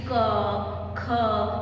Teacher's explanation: देखिए जब भी आप बोल रहे हैं क्या आ रहा है, आखिर में अ का उच्चारण आ रहा है।